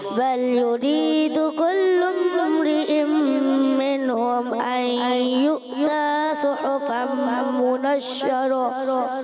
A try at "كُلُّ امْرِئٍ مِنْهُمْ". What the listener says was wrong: کلم پہ غنہ نہیں کریں گے، جلدی آگے بڑھ جائیں گے، ٹھیک ہے؟